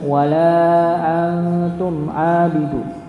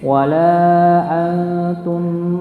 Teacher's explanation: sedikit dialirkan, didengungkan huruf mim ya, jadi jangan langsung terpotong tapi sedikit mengalir, sedikit saja.